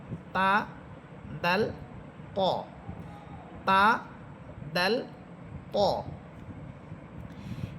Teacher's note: তা, দাল, ত, অর্থাৎ জিহ্বার আগা সামনের উপরের দুই দাঁতের গোড়ার সাথে লাগবে। জিহ্বার অগ্রভাগ সামনের উপরের দুই দাঁতের গোড়ার সাথে লেগে তিনটি হরফ